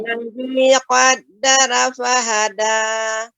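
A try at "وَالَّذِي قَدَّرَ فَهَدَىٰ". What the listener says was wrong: Ronya lebih tebal lagi Ibu. Tadi agak agak apa namanya? Apa setengah-setengah.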